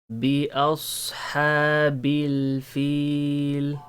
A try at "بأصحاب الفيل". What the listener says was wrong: That's nice.